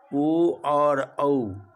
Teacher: इन सबों का उच्चारण स्थान कंठोष्ठ है, कंठ और ओष्ठ दोनों है